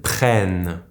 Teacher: the double N followed by the silent ENT will turn into the sound ÈN